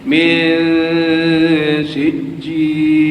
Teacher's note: Dengung dan menyembunyikan bunyi asal nun mati atau bunyi asal tanwin. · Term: ikhfa